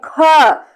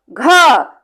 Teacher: क्योंकि जैसे ही हम इसका उच्चारण करते हैं ख, तो मुंह से ढेर सारी वायु हमारे हाथ में आके टकराती है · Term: महाप्राण